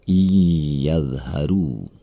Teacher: Nun mati tersebut harus melebur kepada huruf sesudahnya. Iyadharu. Dan perhatikanlah kata walan dan tuflihu. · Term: idgham bi gunnah